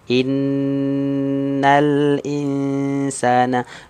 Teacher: nun musyaddadah itu berarti gunnah. Ya. Gunnahnya kuat di sini. Karena nun musyaddadah, nun tasydid.